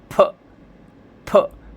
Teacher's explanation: फ, मेरे साउंड से देखिए फ़ोन भी हिल गया। फ, प्रेशर देके बोलना है, मुंह के अंदर से प्रेशर निकालना है दोनों होठों को चिपका कर। जैसे आप होठ खोलेंगे तो एक प्रेशर निकलेगा, जिससे अभी ये फ़ोन हिल गया था फ बोलते समय।